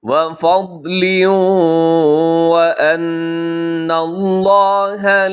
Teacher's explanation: نون مشدد پہ غنہ کیجیے گا